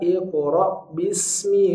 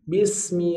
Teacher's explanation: huruf ro ini diapit oleh dua huruf tipis nah Mi adalah huruf tipis Bi adalah huruf tipis maka r-nya jangan ikut agak tipis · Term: ro tebal